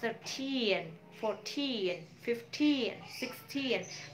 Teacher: So ketika belasan stress syllable-nya itu berada di akhir.